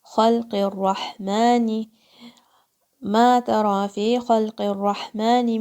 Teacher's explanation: Ha again is a throat letter, middle of your throat.